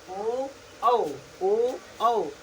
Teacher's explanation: आप बोल के देखिए ओ ओ ना, आप देखेंगे तो ये हमारा जो लिप्स है किस आकार का बन जा रहा है? वृत्ताकार आकार का बन जा रहा है ना